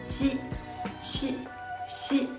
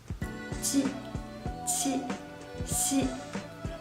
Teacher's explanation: These 3 initials are all produced by using the surface of your tongue. So when you pronounce these 3 initials, you need to put the tip of your tongue behind your lower front teeth.